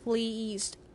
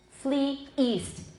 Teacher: is different from the word fleeced in that the first has a glottal stop at the beginning of east.